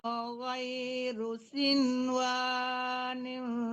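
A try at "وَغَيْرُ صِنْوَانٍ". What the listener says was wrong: Kayak ya, jangan ke niung lagi, jangan ke waw lagi. Kayak ya di depannya, kayak ya disamarkan dan didengungkan.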